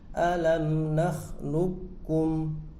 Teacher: Sifat qalqalah dari qaf hilang.